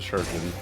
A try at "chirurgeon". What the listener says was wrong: It's pronounced chirurgeon. You missed a syllable. Chirurgeon.